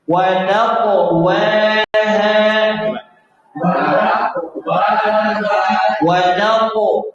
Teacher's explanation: Jaga qalqalah yang tebal pada huruf qaf